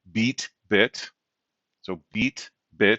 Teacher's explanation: so these are high front vowels